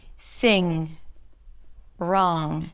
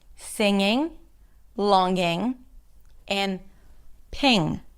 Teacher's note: the tongue goes up in the back blocks the air then you release the air through the nasal passages and the air comes out through the nose. So when you open your mouth you can see that the tongue is totally down. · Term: NG consonants